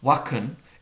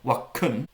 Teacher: Something like wakan, with an a, is just becoming wakun, a bare, boring schwa vowel.